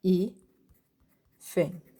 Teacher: quando a gente separa hífen, i, fen, sim? A sílaba tônica é o i.